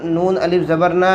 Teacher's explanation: یہاں پر الف سے پہلے زبر ہے، الف مدہ ہوگا، تھوڑا کھینچ کر پڑھیں گے۔